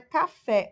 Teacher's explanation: O fé é a sílaba tônica